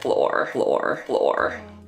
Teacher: You'll get the R, whereas in other places you might get flo. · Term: rhotic